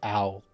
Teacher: So like the L is pronounced the back of your mouth. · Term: dark L